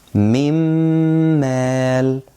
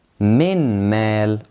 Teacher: So that means if Meem comes after noon sakinah or tanween, you will merge the noon sakinah or the tanween into the Meem and you will apply ghunnah, which is nasal sound, comes out from the nose